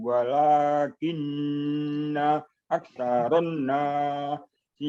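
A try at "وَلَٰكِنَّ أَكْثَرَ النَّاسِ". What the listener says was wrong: aksaron nasi. Nah, nunnya ditasdid, panjangkan.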